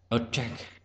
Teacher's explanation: Trọng âm rơi vào âm tiết thứ hai.